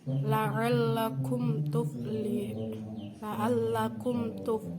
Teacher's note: ada mim sukun bertemu huruf ta, dibaca jelas, yaitu hukum idhar syafawi